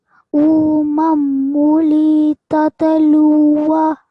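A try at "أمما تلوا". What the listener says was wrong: Okay, so when you join this meme over here with the lam mushaddad, just put a bit more stress on there. And also with the tat, don't make any vibration or any jerk on the tat. It shouldn't be tat, but umamulli tatlua.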